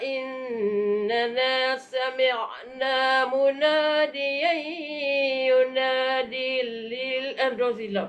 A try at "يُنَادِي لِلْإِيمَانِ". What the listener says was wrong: Ah, jangan dil. Yunadi lil iman.